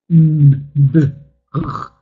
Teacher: you can feel like the vocal cords are working. They vibrate. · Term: voiced consonants